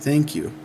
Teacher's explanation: talking casually I say something more like thank you which is kind of more of a D sound than a th sound sometimes